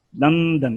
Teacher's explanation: یہ درمیان میں لام اور دال کے درمیان یہ نون غنہ آئے گا